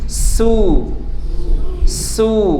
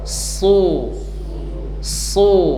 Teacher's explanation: diberikan dommah kemudian diberi ketebalan hurufnya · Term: huruf shad